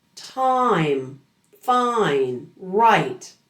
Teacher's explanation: the long I sound is a blend of two vowels. It's a combination of ah and ee. And like all long vowels, it's not simple and flat.